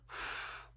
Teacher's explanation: prácticamente es la fricativa bilabial sorda, esta F que estamos diciendo. Entonces vemos que suenan parecidas F labiodental, F bilabial, pero desde luego nosotros nunca soplaríamos unas velas con una F normal, pero sí con una F bilabial. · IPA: ɸ